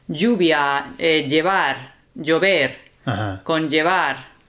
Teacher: So it's like a Y sound, but just a touch of J in there